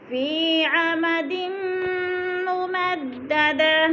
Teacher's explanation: عمد ممددہ گول تا کو وقف کی صورت میں ہاں میں بدل دیں گے. عمدم پہ غنہ ہے، ناک میں آواز لے جائیں گے